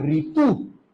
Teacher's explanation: र में जब आप इ बोलोगे तब बेटा ये आपका बनेगा ऋ